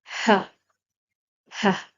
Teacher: the whispery, the soft sound coming deep down from your throat